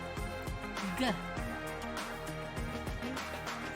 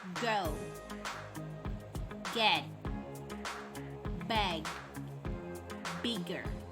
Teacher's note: Voice stop made with the back of the tongue on a soft palate